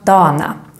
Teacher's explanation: the word dagarna, the days, can sometimes become dana. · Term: spoken Swedish